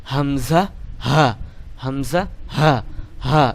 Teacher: হলকের শুরু হইতে অর্থাৎ আপনার মুখের যে হালকা আছে এর শুরুর দিক থেকে আপনাকে এই অক্ষরটি উচ্চারণ করতে হবে